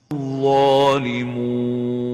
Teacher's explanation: avoid nasalization when pronouncing the wow and make sure you pronounce it without gunna.